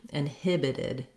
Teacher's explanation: this stopped T changes to a flap T because it's now between two vowel sounds, and it sounds more like a D